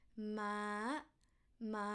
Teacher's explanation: High tone start with mid pitch